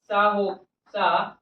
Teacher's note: हवा या वायु कैसी हुई जाती है, रगड़ती हुई या घिसटते हुई। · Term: ऊष्म व्यंजन